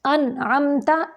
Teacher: نون ساکن کے بعد عین آ گیا اظہار حلقی ہے اور میم ساکن کے بعد تا ہے ادھر اظہار شفوی ہے